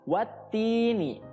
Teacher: ti itu panjang, ya, namanya mad tabi'i, ya, panjangnya 2 harokat